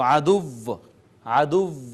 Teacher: پیش والے حرف پر وقف کرنا، کہ ہونٹ گول رہ جائیں، جیسے عدوٌ، تو عدو ایسے ناظرین ہونٹ گول رہ جائیں گے، اس کو کہتے ہیں وقف بالاشمام۔